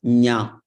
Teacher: When you say Nya, you are using the Talu and then the nose. Both you are using.